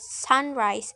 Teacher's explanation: it actually combines two nouns and normally has the stress on the first element or the first syllable · For example, in the word sunrise, so the stress in the first syllable sun.